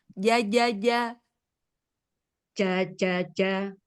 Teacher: jimnya posisikan Kan dia di tengah ya, tengah lidah ketemu langit tengah ya.